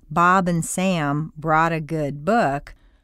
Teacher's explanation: there are no blanks between the words and there is a continuous hum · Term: the underlying hum